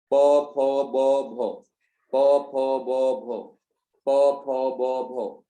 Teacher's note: दोनों होठ आपके आपस में टकरा रहे हैं, तब जाकर के ध्वनि निकलती है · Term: ओष्ठ